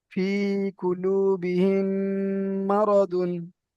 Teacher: সাকিনের পরে মিম এসেছে তাই মিমের সাথে মিলিয়ে এক আলিফ পরিমাণ গুণনা করে পড়তে হবে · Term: ইদগামে সাফাবি